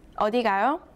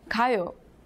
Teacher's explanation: But if you add a question mark and read the last syllable with a rising tone